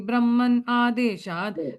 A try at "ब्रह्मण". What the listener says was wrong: You're saying in, it's a na. Te vai Brahmana.